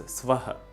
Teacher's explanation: in the word Swaha, there is no U sound